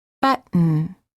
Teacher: Hold the T as in but, and then add an N without releasing the tongue from the gum ridge. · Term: Held T before an N